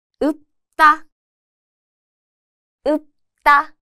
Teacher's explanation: the 리을 sound disappears and it just sounds like 읍, a light unreleased p. This sound is made by gently closing the lips without fully releasing the air, like 읍. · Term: 받침 리을 피읍